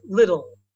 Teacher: my American accent when I speak fast it's more like little so the T is very soft